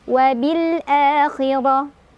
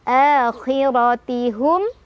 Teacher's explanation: Ro-nya dibaca secara tafkhim karena ro-nya berbaris fathah. Jadi ditebalkan.